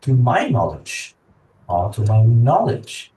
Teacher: he's actually stressing on the word my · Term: sentence stress